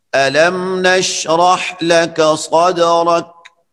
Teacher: یہ آخر میں کاف ہے اور کاف میں قلقلہ نہیں ہوتا